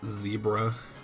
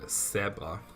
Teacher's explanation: You can feel like a vibration when you say Z as opposed to S, because that is only in your mouth, not in your vocal cords.